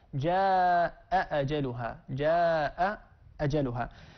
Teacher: وحفص رحمه الله له تحقيق الهمزتين